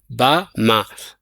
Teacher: በመክፈት ነው ማለት ነው ከንፈራችንን በማራራቅ والباء والميم بانا ميم بانطباقهما ከንፈራችንን ደግሞ በማላጠቅ ነው የሚሆነው ማለት ነው